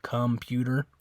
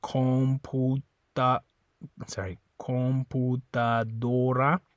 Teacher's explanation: that's one where in English it makes a different sound right in English it's like calm it's like an uh sound computer but in Spanish that's an o sound